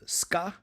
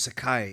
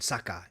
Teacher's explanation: the voiceless velar plosive consonant k, introduced by the voiceless alveolar fricative s sound